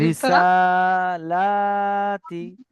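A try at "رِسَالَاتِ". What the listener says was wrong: টান দেন, টান দিয়ে পড়ুন। রিসালাতি। জি, ইজরা করুন তো এটাকে। জি। খাড়া জবরটি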